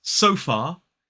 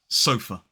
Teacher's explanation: The last syllable contains that schwa. It's not so far, it's sofa.